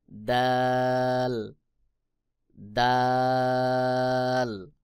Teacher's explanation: দাল জিহ্বার আগা সামনের উপরের দুই দাঁতের গোড়ার সঙ্গে লাগাইয়া · তারপরে রয়েছে দাল। দাল জিহ্বার আগা সামনের উপরের 2 দাঁতের গোড়ার সঙ্গে লাগাইয়া অর্থাৎ তা এবং দাল একই জায়গা থেকে উচ্চারণ হয়। যেমন দাল, দাল।